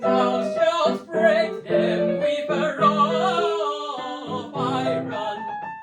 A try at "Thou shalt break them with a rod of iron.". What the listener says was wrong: Yeah, and you need to maybe fix the R's to rolled R's. A little bit more English style. Otherwise, it sounds like Friends episode. Exaggerate.